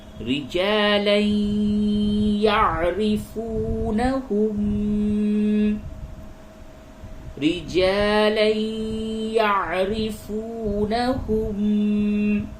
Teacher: یہ لام کے اوپر 2 زبر ہے جسے تنوین کہتے ہیں، تو اس کو یا سے ملائیں، یعنی کہ یہاں پہ ادغام مع الغنہ ہوگا